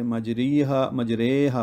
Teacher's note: امالہ والی را جیسے مجریہا پڑھتے ہیں ہم، اس کو ری نہیں پڑھیں گے، مجریہا پڑھیں گے، تو یہ باریک پڑھی جائے گی۔